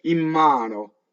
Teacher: I nasalize the N, my lips come together. I don't say in mano with the shadow vowel. I don't emphasize the tip of my tongue. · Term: assimilation